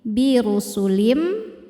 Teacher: Cara bacanya tanwin dileburkan ke mim birusulim sambil didengungkan. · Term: idgham bi gunnah